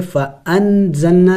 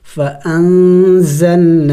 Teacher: یعنی ناک میں آواز چھپائیں گے نون کی، یعنی نون کو ظاہر کر کے نہیں پڑھیں گے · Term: اخفاء